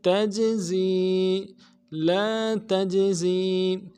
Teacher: جیم جب ساکن ہو، جیم کے اوپر جب ساکن ہو تو قلقلہ ہوگا · زا سیٹی والا حرف ہے، سیٹی باریک ہوگی